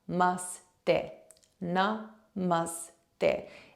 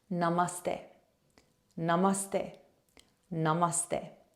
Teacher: the last word is less of a stay and more of a ste. Okay, so it's a slight TH sound, and some people might find that a little bit challenging to do with the tongue, and it's okay if you can't quite get there.